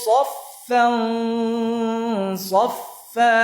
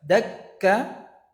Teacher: Kalau saffan ya, suaranya masih mengalir. Ini yang dinamakan dengan rakhawah. Kalau kaf itu syiddah.